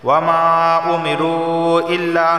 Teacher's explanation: واو مدہ آ گیا اور اس کے بعد حمزہ آ رہا ہے دوسرے کلمے میں، تو یہاں بھی مد منفصل ہے، مرضی ہے 2 یا 3 یا 4 الف کے برابر، اس سے آپ پڑھ سکتے ہیں۔